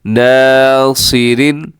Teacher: صاد موٹا ہے، صاد کی باریک کریں گے تو یہ سین بن جائے گا